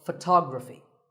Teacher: the stress goes to the second syllable